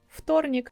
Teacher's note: v becomes f, voiceless, and it sounds like вторник. You barely could hear this f sound at the beginning.